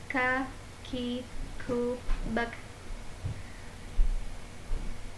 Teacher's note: huruf kaf adalah seperti mengucapkan huruf k dan disertai keluarnya nafas. Ka, ki, ku, bak.